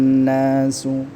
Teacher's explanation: Kemudian nas, an-nasu di sini ada gunnah musyaddadah ya, maka didengungkan nasu, kemudian dipanjangkan 2 harakat